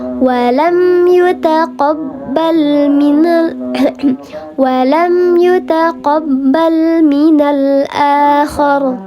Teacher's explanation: Karena mim ini huruf bibir, maka namanya syafawi, huruf bibir yang dibaca jelas. Walam yu, mim sukun ketemu dengan huruf selain mim dan ba.